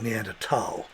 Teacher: the th in german is a t sound